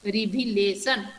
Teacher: where I put the stress mark, I put the stress mark at the third syllable. The first syllable is re, the second syllable is v, the third syllable is law.